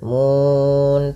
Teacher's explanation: mun panjangkan ya dua harakat, empat atau enam harakat yang di mana kita boleh memilih. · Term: mad arid lisukun